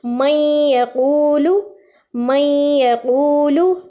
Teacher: درمیان میں تھوڑا سا غنہ آ رہا ہے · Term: ادغام